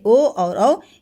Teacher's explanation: कंठ ओष्ठ, यानी जो गले और होठ से निकले, उसमें आपके 2 आपके स्वर आते हैं।